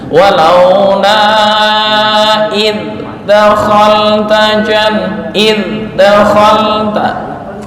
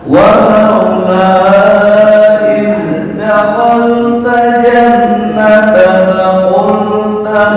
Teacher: untuk zal jangan qalqalah. Makhrajnya udah betul, tapi jangan dipantulan